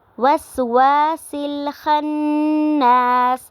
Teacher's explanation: خناس پہ نون مشدد پہ غنہ ہو رہا ہے اور ساتھ میں الف مدہ ہو رہا ہے